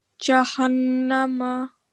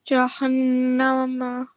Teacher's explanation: you have to create a nasal sound on noon shadda for 2 seconds